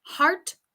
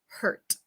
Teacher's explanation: Heart es como más largo, or hurt es como más cerrado.